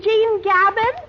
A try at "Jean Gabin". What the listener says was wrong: Oh, not Gabin. It's Jean Gabon. Yes, Jean Gabon. You pronounce it through the nose, you see.